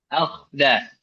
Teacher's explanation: yang kho dan ro itu dia di ujung tenggorokan, ya, tenggorokan atas.